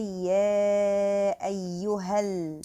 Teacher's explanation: we just stick the word ayyuha in the lam directly of the word al-kafirun, and the alif in the word al-kafirun is dropped down.